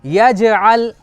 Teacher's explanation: जैसे यजअल तो जीम पर जज़म है, हुरूफ कलकला है, इसलिए वहाँ पर कलकला हो रहा है।